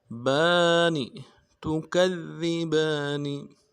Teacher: با کے اوپر کھڑا زبر ہے، ایک انداز میں کھینچیں گے، نون کو نرم سے ادا کریں گے